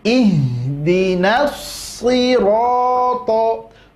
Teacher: di situ so-nya tebal, ro-nya tebal, to-nya tebal. Maka setiap huruf tebal bunyi vokalnya adalah huruf o.